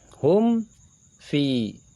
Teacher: Indah hum fi masuk ke dalam hukum mim sukun. Jika terdapat mim sukun bertemu dengan huruf selain mim dan ba, ini dikatakan izhar syafawi. Jadi jelas di bibir.